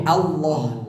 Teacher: Jadi lam yang ditebalkan, lam yang dibunyikan